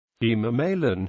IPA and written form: hiːmɑːˈmaɪˌlən (Himamaylan)